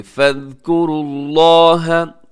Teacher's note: लफ्ज़ अल्लाह को आपने मोटा पढ़ना है क्योंकि उससे पहले रॉ के ऊपर पेश है